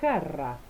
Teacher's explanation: el sonido dorsovelar se produce con el dorso de la lengua y el velo del paladar. Es el sonido j de jarra.